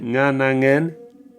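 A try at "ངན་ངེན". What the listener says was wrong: C'était très bien avec le nga, c'était moins bien à la fin. Nganangen, vas-y. Pas nien. Nganangen. Tu gardes le nga. Nga. Nganangen. Et puis après, tu fais ngen. Faites la chasse au nia. Il n'y a pas de nia. C'est des nga.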